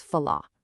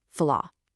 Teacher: you drop that hard R and it literally becomes fala. Just a light airy H sound at the very end. · the R at the very end of these verbs actually sounds like the English H in a lot of Brazilian accents. You take that hard rolling R and you just let it breathe into this soft, breathy H.